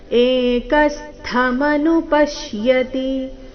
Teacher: ಏಕಸ್ಥ ಕ ಮೇಲೆ ಆಘಾತ